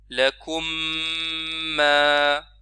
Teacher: Vous voyez, on prononce une seule mime, ça se fusionne, c'est ça, idgham, vous vous rappelez.